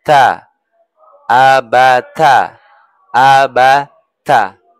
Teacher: hujung lidah bertemu dengan gigi gusi atas. Menekan ujung lidah ke gusi gigi ke gigi seri atas.